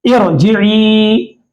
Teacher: तो यहां पर ये कसरे का एतबार, ये पेश का एतबार करते हुए हम रा को मोटा पढ़ रहे हैं